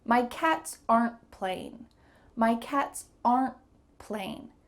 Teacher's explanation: listen for a quick pause or stop after the contraction